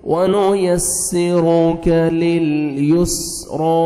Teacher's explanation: را کو موٹا کر کے پڑھنا ہے کاف کو باریک پڑھیں گے